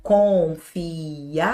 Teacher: Note que o acento ele está na penúltima. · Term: paroxítona